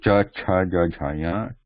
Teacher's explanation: Then the second line, top of the tongue pressing the palatal position